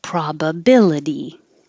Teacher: The T, the itty, sounds like uddy.